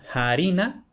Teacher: Un rasgo muy característico del castellano es la aspiración de la F latina, especialmente al principio de la palabra, que en el castellano medieval se aspira y posteriormente desaparece